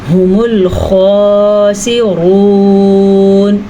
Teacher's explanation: هُمُ الْخَاسِرُونَ، واو مدہ اور را کو پر پڑھیں گے